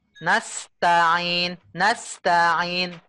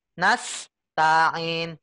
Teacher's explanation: Jadi lidahnya berpindah ya, dari posisi sa ke ta. Kan sa di belakangnya ta tuh.